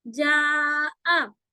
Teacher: حمزہ الگ سے لے کے آئیے، جا کا مد الگ کھینچنا ہے